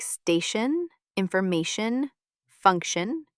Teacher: read the letter T as sh in words like station, information, function and ch when a word ends with chure, culture, sculpture.